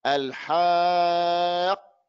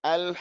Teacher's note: The qaf, no sound, no wind. Habas nefes, stops the air. Habas assault, it stops the sound.